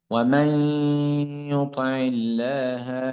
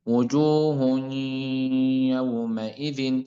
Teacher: لابد أن نأتي بالغنة مع الإدغام